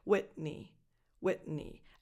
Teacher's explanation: that T, because it comes before an N, doesn't really come out. So you make the movement with your tongue for the T, but it doesn't come out.